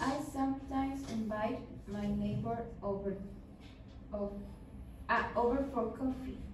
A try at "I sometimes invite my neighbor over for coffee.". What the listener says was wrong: Yeah, you should not emphasize on the over. It's like, I sometimes invite my neighbors over.